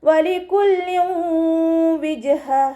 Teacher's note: തെൻവീനിന് ശേഷം ഇദ്ഗാം ബിഗുന്നയുടെ അക്ഷരമായിട്ടുള്ള വാവ് വന്നിട്ടുണ്ട്. തെൻവീനിലുള്ള നൂനിൻ്റെ സൗണ്ടിനെ വാവിലേക്ക് ലയിപ്പിച്ച് ഉണ്ണയോടുകൂടി ഓതിക്കൊടുക്കുക